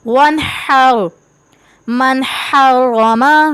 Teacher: نون ساکین ہے اس کے بعد حا ہے، حروف حلقی میں سے حا ہے تو یہاں پہ بھی غنہ نہیں کریں گے.